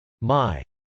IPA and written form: mˈaɪ (my)